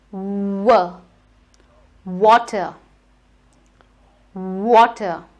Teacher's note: instead of biting your lip, you need to kiss your W. W, a round shape of the lip.